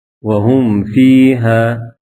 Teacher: میم کو ظاہر کر کے پڑھیں گے، جیسے اردو میں ہم اور تم کی میم کو پڑھتے ہیں۔ اظہار شفوی۔